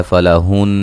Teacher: नून मुशद्दद पे गुन्ना ज़रूरी है।